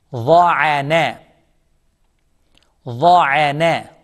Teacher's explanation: Za is a tongue letter, heavy.